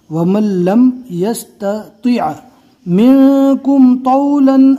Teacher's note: تا کو نارمل اور تو کو پور پڑھنا ہے